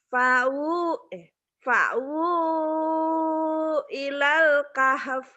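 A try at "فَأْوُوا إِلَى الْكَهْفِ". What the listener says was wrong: Fa'wu gitu. Bukan pau ya. Fa'wu ilal kahaf.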